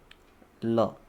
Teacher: वह व्यंजन जिसमें उच्चारण करते समय हवा जो है वह जीभा के दोनों तरफ बगल से निकले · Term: पार्श्विक व्यंजन